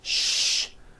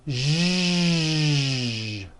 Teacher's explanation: To produce this sound, first make a sh sound, and then you add voicing. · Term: voiced SH sound